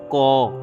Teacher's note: তুমি শুধু ক বলার চেষ্টা করো, শুধু ক। আসলে আমরা ক বললেও ভিতর থেকে একটা অ থাকে।